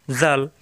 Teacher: জিহ্বার আগা দাঁতের আগে